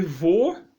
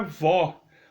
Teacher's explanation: esse som fechado, acento circunflexo, bêbado. Esse som aberto, um acento agudo, que é o pé, vó